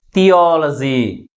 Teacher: Third syllable is pronounced with the greater force comparing with other syllables. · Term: ప్రైమరీ స్ట్రెస్